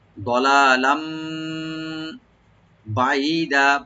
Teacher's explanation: আর দলালাম লাস্টের যে লাম আছে এটা দুই জবর ছিল তানবিন, তো তানবিনের পরে যেহেতু বা আসছে, এটা আমরা তানবিনটাকে মিম সাথে চেঞ্জ করে গুণা সহকারে পারবো, যেটা আমরা একলাভ হিসেবে জানি।